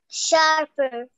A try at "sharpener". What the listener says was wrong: There is sound at the last of the word.